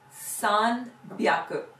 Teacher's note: make that hyaku into a voiced consonant